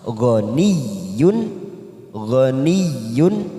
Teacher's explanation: huruf ya yang bertasydid tanpa ditekan lama-lama